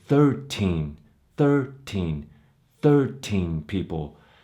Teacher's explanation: 13 as the adjective we're gonna say 13 13 13 people both syllables will be stressed · This is one of the rare occasions where we will actually stress two syllables in the word, dealing with the teens numbers. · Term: equal stress